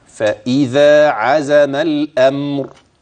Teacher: الذال في اذا حرف حرف حرف والزاي في عزم حرف اخر مع الذال يجب اخراج طرف اللسان اما مع الزاي فلا